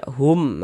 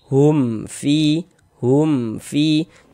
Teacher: Karena dia izhar syafawi maka dibaca jelas tidak berdengung.